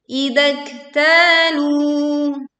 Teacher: tekan huruf kaf sembari mengeluarkan angin saat kaf sukun dibacakan. Kemudian baca panjang 2 harokat huruf ta dan lafaz lu.